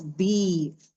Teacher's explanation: या साकिन से पहले कसरा आ जाए तो उसे यामत कहा जाता है, 2 काउंट्स